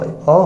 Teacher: मध्य स्वर में अ जहाँ पर हमारे जीभ का कौन सा भाग, मध्य भाग काम कर रहा है